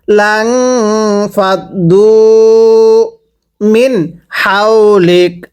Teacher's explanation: এটাকে যদি হাউলিক পড়ি পড়া শুদ্ধ হবে না, হাটা উচ্চারণের সময় গলার মাঝখান থেকে বাতাস বের করে হাউলিক পড়তে হবে।